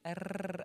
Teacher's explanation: Soit le R roulé, rrr, avec la langue sur le palais. Oui, qui est comme plus un trill lingual qu'un trill labial.